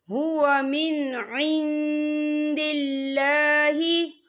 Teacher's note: اللہ کا نام جو ہے باریک پڑھا جائے گا کیونکہ اللہ کے نام سے پہلے زیر ہے۔